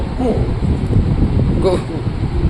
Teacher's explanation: ये जिह्वा मूली है, ये जिह्वा के मूल से निकलता